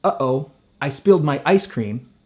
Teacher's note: If I say, uh-oh, I spilled my ice cream, in one sentence I've done 4 glottals.